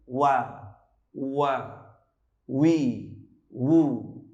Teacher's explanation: kalau waw agak sedikit memunyongkan kedua bibir